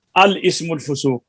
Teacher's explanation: दूसरा ये है, हमजा मफ्तूहा को लाम मकसूर के साथ मिलाकर पढ़ सकते हैं। अच्छा, तो जब मिलाकर पढ़ेंगे तो लाम तो साकिन हो जाएगी, तो आगे फिर इसम का जो हमजा है वो पढ़ा जाएगा